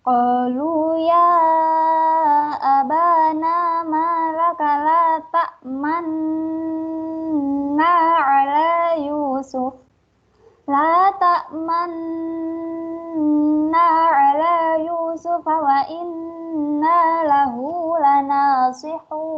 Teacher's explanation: Ismam artinya bibir mencucu di tengah-tengah dengung sebagai isyarat bunyi domah.